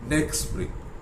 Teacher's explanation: So what happened to t? It has disappeared. You don't say next spring.